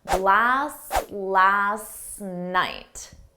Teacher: And notice how blast and last, you don't hear the T in them.